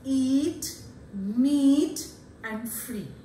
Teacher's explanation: when you pronounce e you'll find that your lips are spread your jaws are very close to each other there is very little opening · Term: nearly closed vowel